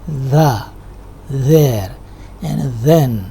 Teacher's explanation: It is different from Urdu dal because in dal is alveolar. In dal your tongue doesn't come between the teeth, while in this sound the tongue comes between the teeth. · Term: dental